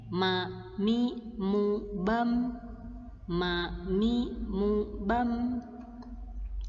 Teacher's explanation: Mim, huruf mim keluar dari dua bibir atau syafatain ya. Ma, huruf mim keluar ketika kita menempelkan dua bibir kita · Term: makhraj asli huruf mim